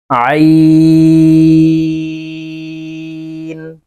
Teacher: হলকের মধ্যখান থেকে চাপ দিয়ে চার আলিফ টান দিয়ে উচ্চারণ করতে হবে